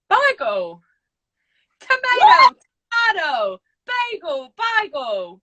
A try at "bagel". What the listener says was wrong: It's like you're about to say Bible. Bagel. Bagel. like a Bible and a seagull. Bagel.